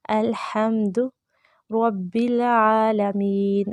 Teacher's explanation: आइन मुस्तहलक से अदा करेंगे, एक अलिफ के बराबर लंबा करेंगे